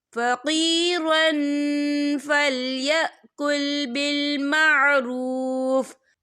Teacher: یہاں دیکھیں فقیرن، را کے پر تنوین ہے، تنوین کے بعد جو ہے فا آ رہا ہے، اور فا جو ہے اکفا کا ورڈ ہے، تو ہم یہ اکفا کریں گے، تنوین کی آواز کو ناک میں چھپائیں گے.